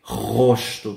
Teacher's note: la primera R, gente, suena desde la garganta, no como no es vibrando la punta de la lengua, ¿ok?